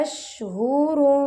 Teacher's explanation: शीन पर हमस हो रहा है